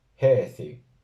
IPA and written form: 'hɛ.θi (HAÍÞI)